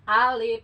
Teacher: Alif itu dihitung dua harakat a satu harakat Lif satu harakat Alif tu jadi Alif itu dua harakat dua ketukan Alif gitu